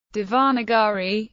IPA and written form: ˌdeɪvəˈnɑːɡəriː (Devanagari)